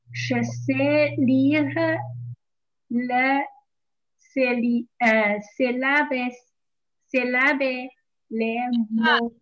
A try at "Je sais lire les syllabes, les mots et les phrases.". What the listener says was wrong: S ▁不 发 音 ，syllable。 Phrase。 这 个 ▁S ▁那 个 中 间 发 ▁z ▁音 ， 这 个 ▁S ▁要 注 意 ， 前 面 后 面 都 是 元 音 发 ▁z ▁phrase。 phrase ▁对 ▁S ▁不 发 音 。